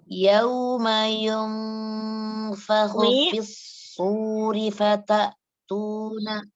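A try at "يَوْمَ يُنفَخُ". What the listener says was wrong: Ya, sempurnakan suara huruf ya dhammahnya. Yauma tidak yung, tapi yu. Yauma yunfakhu.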